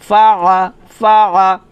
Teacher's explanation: ফা জবর ফা, আইন জবর আ, আ, ফা আ, আইনটা চাপ দিয়ে বলতে হবে গলার মাঝখান থেকে